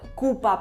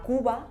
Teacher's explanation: el punto de articulación de la p es el mismo que el de la B Solo que una es sorda y la otra es Sonora